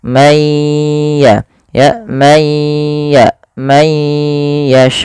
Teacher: Cara membacanya, masukkan suara nunnya kepada ya ya teman-teman. Masukkan, kemudian ditahan suara ya-nya. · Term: idgham bi gunnah